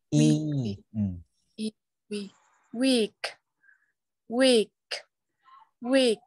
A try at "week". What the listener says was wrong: Âm y ha. Cái kéo dài âm y ra. Week. Week.